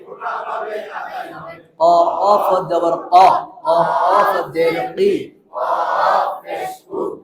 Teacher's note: জিহ্বার গোড়া থেকে মোটা ভাবে আদায় হবে